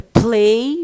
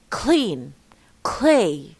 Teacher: P which is voiceless makes L also voiceless